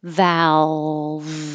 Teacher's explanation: you can make either l doesn't matter you can make a clear l or a dark l the clear l has the tongue up in the front